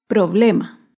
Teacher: el problema se acentúa en la penúltima sílaba pero no lleva tilde porque termina en vocal problema acá vemos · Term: palabra grave